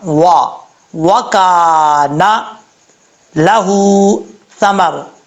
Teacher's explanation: Okay, اب اس کے بعد اگر آپ یہاں سے سٹاپ، یہاں پہ آپ وقف کرتے ہیں، یہاں سے شروع کرتے ہیں وَكَانَ لَهُ ثَمَرٌ، تو واؤ کے اوپر جو شد ہے اس کو پڑھنے کی ضرورت نہیں ہے۔ واؤ کو پڑھتے وقت ہونٹ گول کریں گے